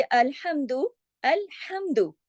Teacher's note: ये हा जो है गले से पढ़ा जाता है, हलक से पढ़ा जाता है। अल्हम्दु, अब दू को जितना लिखा है दाल पेश दू, बस इतना ही पढ़ा जाएगा।